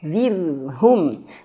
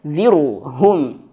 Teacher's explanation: Ro-nya tebal, jangan, tapi zir tipiskan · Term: ro-nya tipis